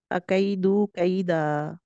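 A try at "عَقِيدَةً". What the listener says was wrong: या मद्दा को क्या पढ़ रही थी आप? यालीन पढ़ रही थी। यहाँ पर या मद्दा होगा?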